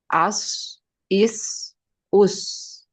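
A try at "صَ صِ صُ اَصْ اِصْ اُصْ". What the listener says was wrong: Baik, huruf sod harus dibenarkan lagi.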